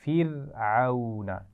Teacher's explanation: فرعون را ساکن ہے لیکن اس سے پہلے زیر ہے تو اس کو بالکل باریک پڑھنا ہے